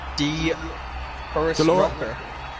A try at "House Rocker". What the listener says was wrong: The House Rocker. The Horace Rocker is the way we've been pronouncing it, but it's actually Dutch, and it's translated as the House Rocker.